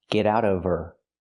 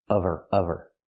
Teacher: Now we need the V sound in of because we don't pronounce the H in her. We link the sounds. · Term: the H is silent